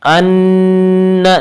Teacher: ان نون مشدد ہے، غنہ ہوگا